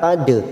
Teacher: dal sukun qalqalah sugro kita pantulkan